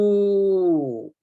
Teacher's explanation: Now the dhamma, when it is followed by the waw, the sound produced would be lengthened.